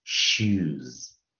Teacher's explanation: 所以你把它最后面的▁u▁给取出来，并且把它拉长一点